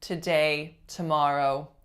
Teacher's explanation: we are gonna produce our T sound with a lot of what's called aspiration that literally just means a burst of high kind of frequency noise